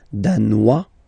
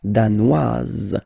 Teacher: Danois, don't pronounce the final S. Danoise, here you pronounce it.